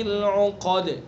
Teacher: قاف کو پر، دال کے اندر قلقلہ